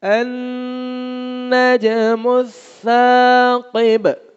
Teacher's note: زبان کی نوک دانتوں کی نوک کے ساتھ لگے گی اور بغیر سیٹی کے ادا ہوگا. اور قاف موٹا ہے، با پر پھر قلقلہ ہوگا.